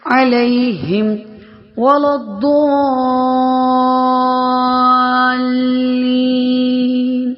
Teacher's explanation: ضاد کے اوپر بڑا مد ہے تو 4 حرکات کے برابر کھینچ کر پڑھیں گے